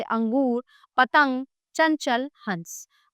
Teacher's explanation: अनुस्वार का उच्चारण करते समय श्वास केवल नाक से निकलती है।